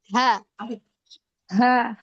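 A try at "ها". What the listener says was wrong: Nah, jangan direm ke hamzah.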